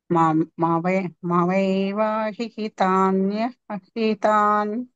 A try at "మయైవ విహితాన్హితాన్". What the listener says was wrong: హితాన్ హితాన్ కంటే ముందు వి ఒకటి వస్తది